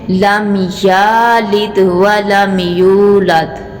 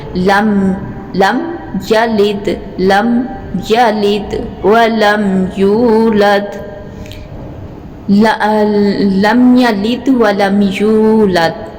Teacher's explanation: यू को लंबा करेंगे, या को इधर लंबा नहीं करेंगे